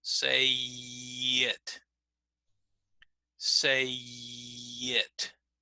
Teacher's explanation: So that Y sound will help connect those two ideas. · when I say the word say, we don't really hear that Y sound. But when I put it together with the next word, then we start to hear the Y. · the final vowel of the word before connects to the first vowel of the following word, and often we use a glide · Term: vowel to vowel linking, vowel to vowel glides